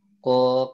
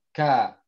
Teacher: Karena ko kan di belakang tuh. Huruf kaf ini agak maju ke depan.